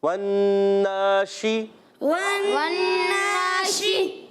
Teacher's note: شین، شین ادا ہوتا ہے زمان کے درمیان اور تعلق کے درمیان سے، اور شین میں ایک صفت پائی جاتی ہے، اس کو کہتے ہیں تفشی۔